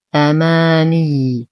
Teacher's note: ننتبه كثيرا لتشديد الياء، ولو وقفنا على الياء نعطيها نبرا بسيطا